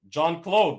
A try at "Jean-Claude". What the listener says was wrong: Jean-Claude. Jean is not John. No, it's not. Jean-Claude Van Damme, bro. It's Jean, bro. Like jeans.